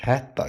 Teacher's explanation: Qoşa t olanda da birinci t olduğu kimi. İkinci t d-ya.